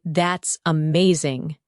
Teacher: When you say, That's amazing. your tone rises with excitement.